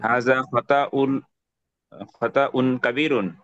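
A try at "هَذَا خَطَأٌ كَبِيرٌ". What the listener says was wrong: হুম। Good.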